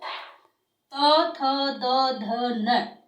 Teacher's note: जब अपन इनको बोलते हैं तो अपनी जीभ जो है वो दांतों को स्पर्श करती है, इसलिए इन्हें दंत्य कहा जाता है